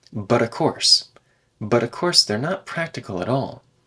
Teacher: But of course, so we could say a course or of course, both are fine. And the T in but should be tapped